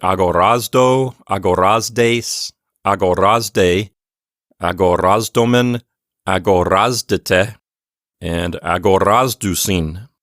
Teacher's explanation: As we have mentioned before, we are telling you to pronounce the letter zeta as if it is a Z sound and a D sound put together